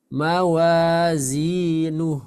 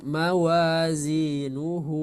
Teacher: wasal atau meneruskan bacaan hukum Bacanya adalah Mad Silah qasir sedangkan ketika wakaf atau menghentikan bacaan tidak dibaca panjang melainkan disukunkan saja